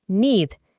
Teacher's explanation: vamos a reemplazar la doble E por una I larga